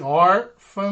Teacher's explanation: a penúltima sílaba mais forte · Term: paroxítona